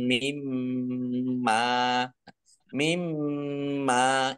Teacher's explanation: mim tasdid dibaca mendengung ditahan dua harakat